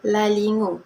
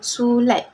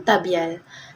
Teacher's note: Sisian gusi bersuara L ditemui di awal kata, tengah kata dan akhir kata.